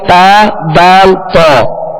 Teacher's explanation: زبان کی نوک اور اوپر کے دانتوں کی جڑ، اس سے 3 حروف ادا ہوتے ہیں تا دال تا